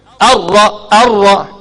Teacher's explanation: Ra tebal pasal dia bagi fathah.